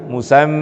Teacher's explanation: Itu mim tasdid harus ditahan, harus dibaca gunnah, yaitu membaca dengan mendengung, keluar hurufnya dari pangkal hidung kita.